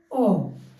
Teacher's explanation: जीभ के मिडिल से उसकी साउंड फील होती है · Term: मध्य